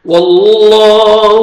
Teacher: کرنا ہے اور پر کرنا ہے، اور فتحہ الف صغیرہ ہے، الف مدہ کے قائم مقام ہے، 1 سیکنڈ لام کو کھینچنا بھی ہے